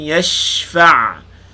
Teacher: shin sukun, panjangkan bunyi shin, hamburkan angin dia.